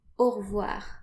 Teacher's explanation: French people often omit the E and just say au revoir. So you can say that as well if you prefer.